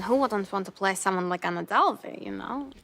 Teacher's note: In her pronunciation of the word want, she replaces the voiced labial velar approximant w with the voiced labial dental fricative v to sound more like vant. This change is a characteristic of Russian phonology, as the voiced labial velar approximant w is not used in Russian language.